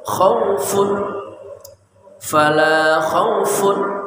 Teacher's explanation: kha dari ujung kerongkongan